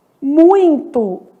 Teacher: muito que é um ditongo que nasaliza esse i, né? Muito. · E aqui, ó, vamos colocar são, pronunciado pelo nariz, muito, que é um ditongo que nasaliza esse i